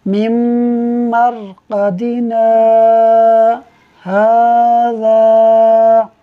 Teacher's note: دیکھیے میم، اس کے اندر نون ساکن ہے، نون ساکن کے بعد پھر میم آ رہا ہے، اور یہ جو نون ساکن کے بعد میم ہے یہ حروف یرملون میں سے ہے، لہٰذا یہاں ادغام کی وجہ سے ہم غنہ کر رہے ہیں اور میم کو میم سے ملا کر پڑھ رہے ہیں۔